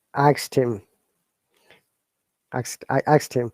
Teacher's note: this asked when you're pronouncing it becomes like t sound and then that e becomes i